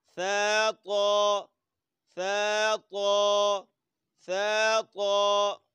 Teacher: قریب المخرج ہیں. ثا زبان لگتی ہے دانتوں کے کنارے سے، اور طا پڑھتے وقت زبان کی نوک لگتی ہے اوپر دانتوں کے مسوڑوں سے